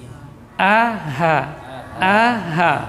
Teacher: Walaupun satu makhraj, yaitu sama-sama di pangkal tenggorokan, namun yang paling di atasnya a, di bawahnya ha. Makanya ha itu aqsal halqi min jihatis sadr. · Ha huruf hamas dan rakhawah. Huruf hamas dan rakhawah. Keluar di pangkal tenggorokan